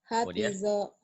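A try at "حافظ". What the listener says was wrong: Bukan ho, tapi itu ha.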